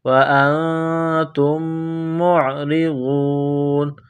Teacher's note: را کے نیچے زیر ہے، را کو باریک کرنا ہے